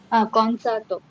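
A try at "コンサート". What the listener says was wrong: ಕೋನ್ಸಾತೋ. ಹಾಂ, ಇಲ್ಲಿ ಎಳಿಬೇಕು.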